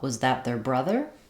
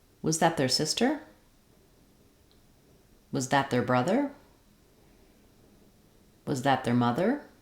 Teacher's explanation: we're going to rise up on brother on the stress syllable and the second syllable brother · Because was that is a yes-no question, you're going to notice a rising intonation on the stressed word, which will be the last word in the phrase.